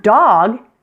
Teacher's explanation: The word dog has one vowel sound, the ah, so it's a 1-syllable word.